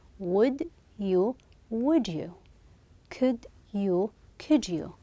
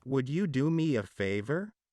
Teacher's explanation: when a word ends with a D sound and the next word begins with a Y sound and the two sounds often meet together and they will be changed into a j j sound so we're having here would you do me a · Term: assimilation